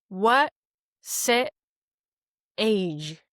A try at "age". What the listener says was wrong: Yeah, age. It's a diphthong. You want to hold it out.